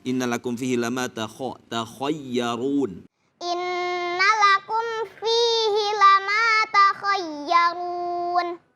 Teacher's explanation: Tebalkan huruf kha karena dia termasuk isti'la ya.